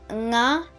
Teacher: Next we have the Voiced Velar Nasal